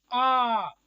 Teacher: विवृत आ बोला जाता है ना मुख पूरा खोल के, आ। तो ये इसका एग्जाम्पल होता है बड़ा आ। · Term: विवृत स्वर